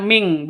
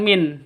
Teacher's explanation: nun matinya ditambah dengan ng. Jadi bacanya ming, bukan min